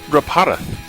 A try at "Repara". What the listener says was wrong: You have to roll the R.